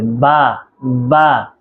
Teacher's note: আমাদের ঠোঁটের যে ভিতরের অংশটুকু একটু ভিজা ভিজা থাকে সবসময় ওই জায়গা থেকে বা উচ্চারণ হবে